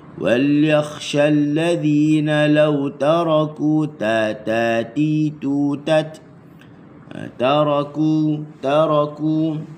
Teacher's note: huruf ta, hujung lidah digusi makhrajnya